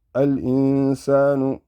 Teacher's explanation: Al in, sin fatha, alif stretching it, sa, al insa, nun damma nu, al insanu. This is the nun sakin followed by a sin. Sin belongs to the ikhfa.